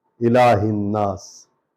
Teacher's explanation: الف کے نیچے زیر ہے، لام پر کھڑا زبر ہے، الہ، لام کو لمبا کریں گے کیونکہ اس پر کھڑا زبر ہے، اور ہا کو جو ہے نون میں ملائیں گے، الف لام کو نہیں پڑھیں گے بلکہ نون متشدد کو پڑھیں گے کیونکہ اس پر شد زبر ہے، اس کو ہم پڑھیں گے.